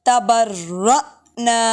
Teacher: حمزہ ساکن ہے اس لیے جھٹکا دیا میں نے اس کو